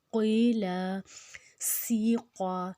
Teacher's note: قاف جو ہے وہ موٹا ہے، سین سیٹی والا ہے، یا کے اوپر جزم ہے جس کی وجہ سے 2 حرکت لمبا ہو جائے گا.